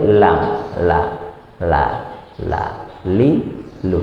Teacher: Nah, di ujung sisi lidah, ya bukan yang samping, bukan yang kanan, bukan yang kiri, tapi ujung sisi lidah berjumpa dengan gusi atas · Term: huruf lam